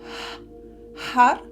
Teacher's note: ça se prononce avec un H aspiré comme en espagnol, Har, et le R roulé aussi comme en espagnol. · le R roulé aussi comme en espagnol. Donc on roule sur le palais.